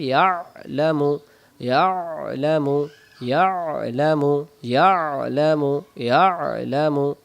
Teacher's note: ইয়ালামু ইয়া ইয়া। ইয়া এমন গলায় লাগবে। আইন অক্ষরের উচ্চারণ স্থান আইন অক্ষর হলকের মধ্য থেকে একটু চেপে পড়তে হলক কি গলা গলার মাঝখান থেকে হবে